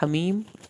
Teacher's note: ہا کو حلق سے پڑھیں گے